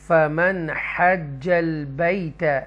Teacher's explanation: تو وہ throttle letters ہیں 6، ان میں سے نون ساکنہ کے بعد ہا آ رہا ہے تو لہٰذا ہم اس کو اظہار کریں گے، کلیئر پڑھیں گے، نون کی آواز کو کلیئر پڑھیں گے